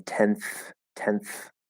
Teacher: we're very likely to just do a dental um t here because it's a voiceless th